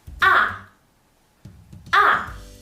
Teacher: The last one is the fourth tone. It's a high falling tone. Your sound should be from the top to the bottom, short but powerful.